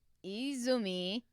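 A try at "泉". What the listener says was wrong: You put the emphasis in the wrong area.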